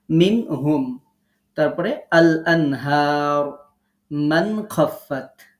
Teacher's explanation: এখানে নুন সাকিনের পরে হা আছে, এখানে হা আছে, এখানে খ আছে। তো এগুলো যেহেতু কণ্ঠনালী দিয়ে উচ্চারণ হয়, সুতরাং এই জায়গাগুলোতে আমরা গুণনা করব না, মিল করব না, কিছুই করব না, যেমন আছে তেমন পড়ব। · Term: ইজহার